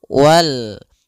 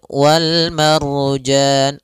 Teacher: alif lam qamariah itu lamnya dibaca dengan jelas